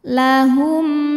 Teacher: mim sukun ini kita bunyikan dengan jelas bunyinya Tetap bunyi m dan tidak kita tahan lahum la la Mad Thobi'i ziri sebab ada Alif yang sebelumnya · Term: izhar syafawi